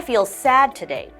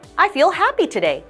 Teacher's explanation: so in this sentence your intonation is going to go downwards because you're feeling sad